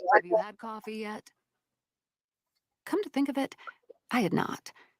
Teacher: She always ends her sentences breathy